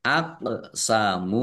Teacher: qof sukun bacaan qalqalah dibaca memantul ditampakkan pantulannya